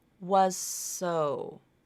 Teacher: links up to is voiceless like maybe the S consonant s that first consonant the Z might change its voicing to be more similar to the second consonant · that Z will either reduce its voicing or drop it completely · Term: assimilation